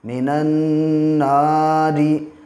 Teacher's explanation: جب بھی نون پہ تشدید ہوگا تو 1 الف کی مقدار ناک میں گننا کریں گے، آواز کو ٹھہرائیں گے